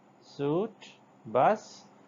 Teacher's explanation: This is s sound is alveolar according to the place of articulation, and fricative if we talk about the manner of articulation